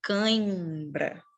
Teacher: Já o nasal, o ar, ele é dividido. A maior parte sai pela boca, mas uma parte significativa passa pelas narinas. E é o que dá o som de nasalado